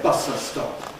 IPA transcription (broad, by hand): ˈbʌsə stɒp